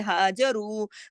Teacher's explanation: رو را کو موٹا پڑھیں گے، دو حرکات کھینچیں گے